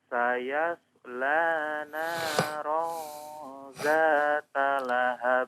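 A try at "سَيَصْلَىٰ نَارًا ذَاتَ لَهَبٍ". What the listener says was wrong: Ya, huruf shad sukunnya diperjelas lagi ya, bahwa itu huruf shad bukan sin ya.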